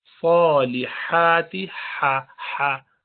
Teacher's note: اس میں sound برتھ کی sound آنی چاہیے، سانس نکلنی